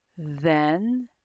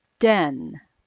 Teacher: listen to how the air flows for then and how it stops for den